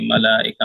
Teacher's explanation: میم کو جلدی پڑھیں گے، اور لام لام کے اوپر مد ہے اور کھڑا زبر بھی ہے، تو لام کو کھینچ کر پڑھیں گے، اور حمزہ جو ہے، حمزہ بھی اسی کلمے میں آ رہا ہے، مد سے بانے واجب ہوگا، تو اس کو تھوڑا کھینچ کے پڑھیں گے، کتاب میں دیکھ دو کر کے تو نہیں تین بول الف رہے کے برابر کھینچ کے پڑھیں گے۔